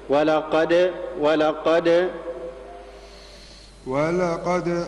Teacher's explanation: قلقل الدال لا تكسرها